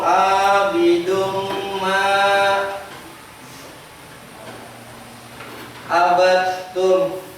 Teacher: Ini dibaca dengung. Dengungnya masuk tuh idgham. Harus dibaca dengan dengung.